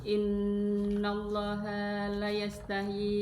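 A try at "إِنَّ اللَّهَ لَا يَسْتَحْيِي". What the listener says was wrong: la-nya panjang. la yasta.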